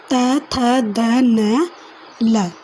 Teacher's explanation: फिर है दंते, जो दांतों से बोले जाते हैं, ठीक है, जो दांतों से बोले जाते हैं, दांत के नीचे से ऐसे बोले जाते हैं। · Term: दंते व्यंजन